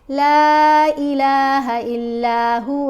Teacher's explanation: آگے جو مد ہے لام کے اوپر یہ مد منفصل ہے اور اس کو 3 الف جتنا لمبا پڑھتے ہیں